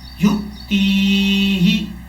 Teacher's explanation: تا کے بعد جو یا ہے اس کو لمبا کریں گے ایک الف کی مقدار